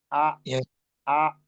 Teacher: Hamzah yang di akhir harus terdengar ya, Hamzah. Jangan sampai hilang huruf Hamzahnya.